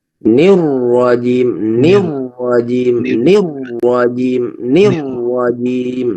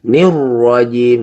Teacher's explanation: Jadi rohnya langsung dibaca tebal